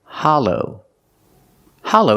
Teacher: the second syllable is a long o like go and no